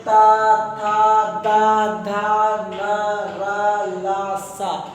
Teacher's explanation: दांतों का प्रयोग हो रहा है, बराबर से जिह्वा दांतों को टच कर रही है, छू रही, स्पर्श कर रही है।